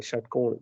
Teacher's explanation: मूर्धन्य सा है जहाँ षटकोण लिखते हैं, षटकोण, जिसमें जिह्वा पूरी परिवर्तित हो जाती है